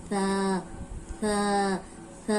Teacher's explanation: अब ये मैंने आपको पहले भी बताया था कि सा नरम हर्फ है और इसको अदा करने का क्या तरीका है कि ऊपर सामने वाले जो दो दांत हैं उनके किनारे पे जबान रख के